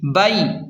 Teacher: یہاں پر یا لین ہے تو اسے جلدی اور نرمی کے ساتھ پڑھیں گے